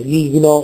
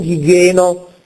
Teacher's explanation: a grado zero, vocalismo zero, cioè la vocale scompare, non è pronunciata, gigno, non gigeno, ma gigno.